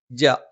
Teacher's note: നാവിന്റെ മധ്യഭാഗം മേലെ അണ്ണാക്കിലാണ്